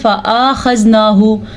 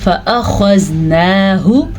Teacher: فَأَخَذْنَاهُ، خو پوٹا پڑھیں گے، پر پڑھیں گے، اور فا کو لمبا نہیں کرنا، نہ ہی ہم نے حمزہ کو لمبا کرنا ہے.